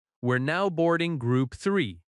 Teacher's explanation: You hear the stressed words boarding and three, so you stand up.